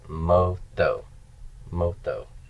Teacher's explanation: The tau is going to slide over and take this vowel, and we're going to stress this final syllable now